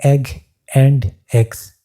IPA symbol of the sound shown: e